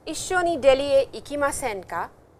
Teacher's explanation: if you put this ka with a rising intonation, it has a meaning which is used as a polite invitation